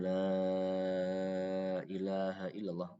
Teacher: mat munfasil matnya ditambah lagi 2 harokat menjadi 4 harokat. Jadi kalau biasa baca 2 harokat tambah lagi 2 harokat menjadi 4.